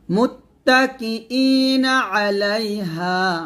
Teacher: কা বলা যাবে না কফ বলতে হবে মোটা করে